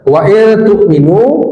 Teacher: nun sukun bertemu ta, ikhfa disamarkan lalu didengungkan